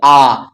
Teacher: ज्यादा बड़ा मुंह खुल जा रहा है तो क्या हो गया विवृत स्वर हो गया